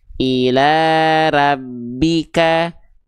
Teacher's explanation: Nah, jadi kalau ada huruf hijaiyah yang berharakat baris atas keluarnya bukan dengan vokal A, tapi condong pada bunyi vokal seperti O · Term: keadaan tebal, tebal